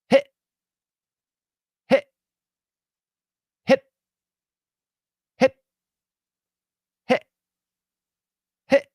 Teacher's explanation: glottal stop my tongue just sits there and back here it closes